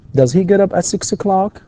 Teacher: أيضا لاحظ الانتونيشن اللي أنا إيش أعمله عندما أقرأ السؤال هنا في نهاية السؤال يكون فيه rising intonation